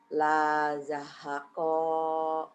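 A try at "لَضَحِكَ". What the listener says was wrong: Pendek ujungnya. La zahako. La zahako.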